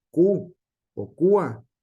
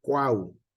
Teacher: se pronuncian tres vocales en una sola sílaba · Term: triptongo